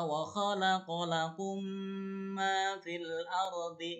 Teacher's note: Jadi mim yang pertamanya hilang dimasukkan kepada mim yang berikutnya dengan gunah atau dengung, ditahan 2 harokat.